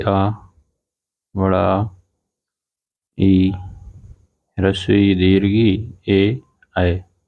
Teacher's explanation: जो अवृतमुखी स्वर होते हैं इनमें होंठ गोलाकार नहीं होते हैं